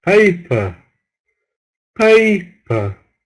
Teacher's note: all the stress on the first syllable